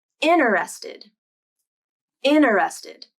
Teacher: other and the t begins a weak syllable like in interested native speakers might drop the t sound completely